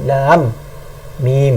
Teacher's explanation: Sebab tu kena dengung 2 harakat di antara lam dan juga panjang mim. Alif lam mim, nampak panjang 6, kemudian dengung 2, kemudian panjang balik 6. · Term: idgham mislain